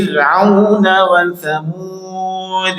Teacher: fanya fi kasrah rnya tipis